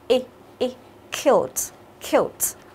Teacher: Khi mà chúng ta đọc Y ngắn thì miệng chúng ta thả lỏng ra, còn Y dài chúng ta sẽ căng ra hai bên